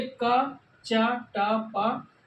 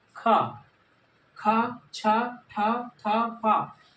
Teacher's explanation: जैसे आपने अल्प प्राण में बोल करके देखा है कि वायु कम निकल रही थी, अब हमने इसमें कहा कि वायु ज़्यादा निकले